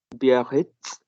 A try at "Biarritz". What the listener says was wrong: That's right.